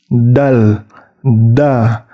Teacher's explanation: huruf dal ujung lidahnya itu bertemu dengan pangkal gigi seri atas atau tempat gigi seri atas itu tumbuh